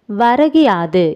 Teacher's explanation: வரகியாது என ஒலிப்பதை அறியலாம். முதல் சொல்லின் இறுதியில் உள்ள கு என்னும் எழுத்து கி என்று ஒலிக்கிறது. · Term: குற்றிய லிகரம்